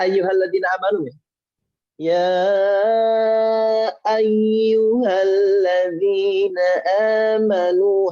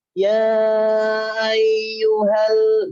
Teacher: Meskipun nyambung, tapi ada space karena ada huruf hamzah di situ.